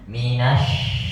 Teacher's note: Nasya itu jangan ditutup Pak. Justru sya itu disebarkan prosesnya.